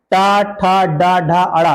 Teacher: तो ये आपका आता है मूर्धन। मूर्धन यानी कि जब जीभ आपके तलवे के आगे भाग को टच करके झटके से आगे की तरफ आए।